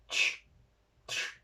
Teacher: Tenemos la TS en sí, que sería como T más la S del sur, la S apical, que sería ch, ch.